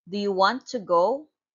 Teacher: It is a rising intonation because it is a question answerable by yes or no.